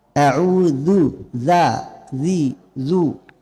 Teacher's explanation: Tidak mengalir nafas pada huruf zal. Kalau mengalir nafas pada huruf zal maka otomatis langsung menjadi tha. Dzu tidak mengalir nafas. · Huruf zal itu satu makhraj dengan huruf sa. Membedakannya hanya jahar.